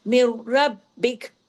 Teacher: جڑ رہا ہے، کیونکہ را پہ تشدید ہے، مر رب، اور را ہیوی بھی ہو رہا ہے، را ڈبل بھی ہو رہا ہے، اور با باریک اور با بھی ڈبل